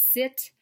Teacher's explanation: next we move on to the tongue behind the teeth the fricative voiceless sound